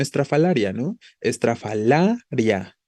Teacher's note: no hay separación entre la i y la a al final